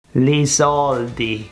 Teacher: The L is pronounced as an R. It's a recurring feature. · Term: rotacism